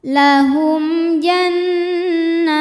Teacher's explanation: Nah, hukum tajwidnya mad tabi'i muqaddar sebab nun berharokat fathah panjang. Cara bacanya nun dipanjangkan 2 harokat.